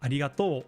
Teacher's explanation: It like goes up at the end typically in Kansai dialect.